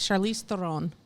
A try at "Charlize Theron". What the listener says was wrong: Why are you rolling the R?